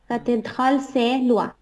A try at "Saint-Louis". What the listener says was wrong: না সে না সা লুই